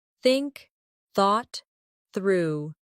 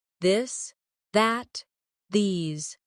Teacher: Put your tongue between your teeth and push air out for think. For this, your tongue touches the same position but with your voice turned on. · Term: th sound